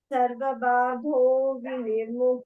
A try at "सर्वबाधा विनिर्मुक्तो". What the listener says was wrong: Badha vinirmukto, not badho.